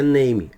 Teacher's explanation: esse aqui é o som do n, ponta da língua atrás dos dentes de cima. Automaticamente aqui eu não tenho esse E, então fica name, name.